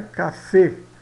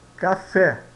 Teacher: esse e aqui é aberto né